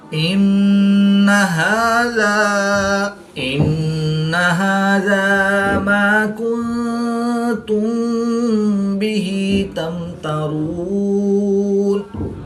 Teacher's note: میم ساکن کے بعد حرف با ہے تو یہاں پر اخفاء شفوی ہوگا. یہاں پر بھی غنہ زمانی کر کے پڑھیں گے